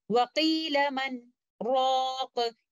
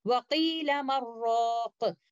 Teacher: Instead of reciting it like this, وَقِيلَ مَنْ رَاقُ. We should not be merging letter Noon into letter Ra. In fact, we will recite it with Idhar by reciting letter Noon and letter Ra clearly like this, وَقِيلَ مَنْ رَاقُ. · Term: Sakht